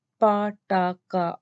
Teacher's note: the consonant pa, ta, ka are not aspirated. Word initially mean when we produce the pa, ta, ka sound are not aspirated in Pakistani English or at the beginning of stress syllable.